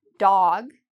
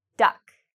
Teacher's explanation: This is an aw sound: dog, versus uh: duck.